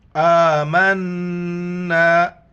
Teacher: حمزہ کے اوپر کڑا زبر ہے، ایک الف کی مقدار کھینچنا ہے ، نون پر جو غنہ کرنا ہے، ناک میں آواز چھپانی · کے اوپر کڑا زبر ہے، ایک الف کی مقدار کھینچنا ہے، نون پر جو غنہ کرنا ہے، ناک میں آواز چھپانی ہے